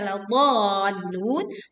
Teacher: panjangkan huruf dha 6 harokat, baru kita menekan ke huruf di depannya, yaitu huruf lam